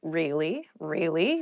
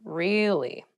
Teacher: show that you're not so interested in the conversation with downward intonation